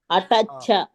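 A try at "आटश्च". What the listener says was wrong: ఆకి దీర్ఘం పెట్టండి.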